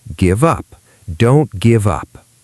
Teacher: So we say don't give. Then give links to up.